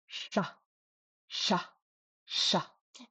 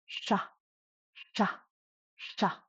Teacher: what makes it different from an English SH is your tongue is curled up touching the roof of your mouth about a centimeter back. Like that.